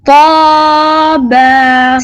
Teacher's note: یہ موٹا پڑھے جانے والا تو اور اس کے ساتھ با ہے. تو کو پر پڑھیں.